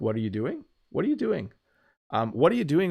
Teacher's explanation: if you listen to me say it, it does kind of go up at the end